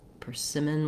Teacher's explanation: when we're looking at persimmon we have second syllable stress